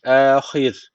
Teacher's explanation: Öncesindeki harfin harekesi altta. Dolayısıyla ra harfi burada ince okunacak. Yani duracağımız zaman burada ince duruyoruz.